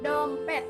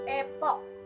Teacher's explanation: Contoh di bunyi vokal yang keempat adalah E, yaitu vokal depan, sedang, tak bundar, dan semi tertutup yang terjadi apabila lidah diangkat dalam ketinggian sepertiga di bawah vokal tertutup